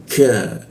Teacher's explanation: Lidahnya diturunkan sehingga membaca K itu ada hembusan udara.